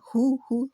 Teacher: पूरे होंठ गोल करके हु, पेश के लिए होंठ फुल गोल हो जाते हैं